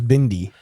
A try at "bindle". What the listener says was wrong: No, it's an L.